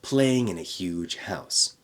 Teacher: connect in a into one little chunk